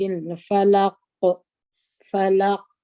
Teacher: یو قاف ساکن کی دلته مو قلقله پر وکړه